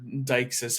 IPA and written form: daɪksis (deixis)